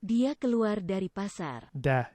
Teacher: It seems that a vowel gets fronted and raised a bit after voiced consonants, or at least voice stops.